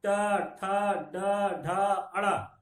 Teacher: ट, ठ, ड, ढ, अड़ा, ये आपकी मूर्धा ध्वनि है। ट से लेके अड़ा तक आपकी मूर्धा ध्वनि है, जिसमें जीभ मुड़ के ऊपर चली जाती है। जब ट बोलेंगे आपकी जीभ मुड़ जाएगी।